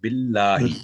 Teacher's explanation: اس کو بھاری نہیں کریں گے کیونکہ الف اللہ کے نام سے پہلے با کے نیچے کسرہ ہے تو باللہ. اسی طرح بسم اللہ یہ بھی ملہ بسم اللہ.